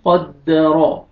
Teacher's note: پہلا لفظ ہے ہمارا قاف فتحہ دال شدہ قد، دال فتحہ دا قد، را فتحہ را قد را، را کو مر فتح ہے، را کو اپنے موٹا کر کے پڑھنا ہے